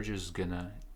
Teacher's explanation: we cancel the D because N is stronger than D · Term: sound cancellation